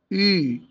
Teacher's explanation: يعني انا بنطقها اللي هي اي بس مع ضم الشفتين بقول ايه بقى يعني اقول اي بس اخلي الشفتين مضمومين يبقى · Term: حرف اليو